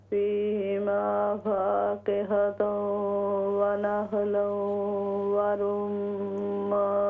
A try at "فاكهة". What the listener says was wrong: फाकिहतुं, पेश को क्लियर कीजिए। फाकिहतुं व नख्लु,